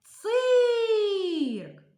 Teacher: тому що один голосний далі визначаємо куди падає наголос вимовляємо цирк який звук ми тягнемо голосом звук и наголос падає на звук І